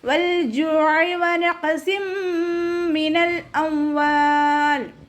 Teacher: വാവ് ഉച്ചരിക്കുമ്പോൾ ചുണ്ടുകളെ വട്ടത്തിൽ പിടിച്ചു കൊടുക്കുക